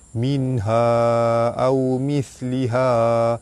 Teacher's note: Nun mati bertemu dengan ha, izhar halki, dibaca terang jelas tanpa dengung.